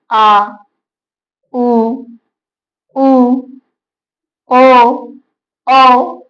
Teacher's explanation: इन वर्णों के उच्चारण करते वक्त जीभ के पिछला वाला भाग काम करता है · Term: पश्च स्वर